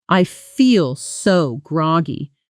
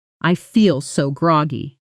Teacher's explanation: feel so blends together with barely a pause